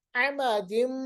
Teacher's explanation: दो ज़ेर के बाद मीम, इदगाम बगुन्ना